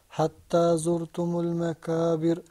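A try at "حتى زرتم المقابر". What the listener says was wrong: Now remember, we've got two letters. We've got the qaf and we've got the kaf. When you pronounce the kaf, you pull the corners of your mouth back. You go like this. Kaf. The qaf, you bring your lips together. Now I want to hear the qaf sound. It comes from the back. Qaf.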